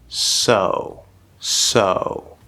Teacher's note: the fully enunciated very clear perfect s sound in english so there's a lot of force lots of good air there's a whistle sound because of the position